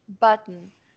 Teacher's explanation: ele não coloca vogal entre o T e o N